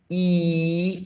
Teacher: you do this exercise you and you focus on your tongue you should feel that your tongue goes to the front e close to your teeth